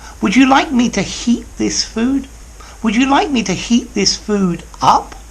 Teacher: to add emphasis make that up a little bit louder